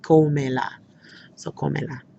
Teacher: So I would say, cómela. And I would put the accent on the O there because, again, I want the stress on the O.